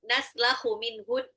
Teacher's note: nun sukun ketemu ha, ini adalah izhar, harus jelas.